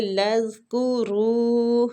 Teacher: را کے اوپر جو مد ہے اس کو آگے لذکروا، زال نرمی والا حروف ہے، قلقلہ نہیں کرنا ادھر۔